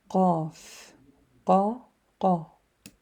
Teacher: So qaf is on the soft palate. If you touch up, you will see above your tongue, the palate, we have a hard palate and then the soft one, which is closer to the throat.